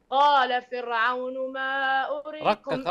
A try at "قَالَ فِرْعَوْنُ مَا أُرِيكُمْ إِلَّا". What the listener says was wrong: رقق الراء رقق الراء.